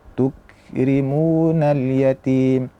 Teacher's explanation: Artinya mereka mempunyai sifat syiddah dan hames. Kita baca tuk ditahan dulu kemudian baru dilepaskan untuk menghasilkan sifat alhamsu. Yaitu sifat ee mengalirnya nafas.